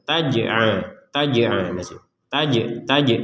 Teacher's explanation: Jangan dibaca riza, gak ada itu, gak ada pantulan untuk huruf zai. Kalau huruf j memang wajib dipantulkan.